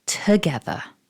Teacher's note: for this word is don't pronounce that first vowel too strongly when we look at the word we might be tricked into thinking that it's an ah or an o or an ooh possibly but it's just a weak schwa